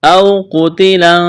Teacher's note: واولین ہے، اس کو کھینچنا نہیں ہے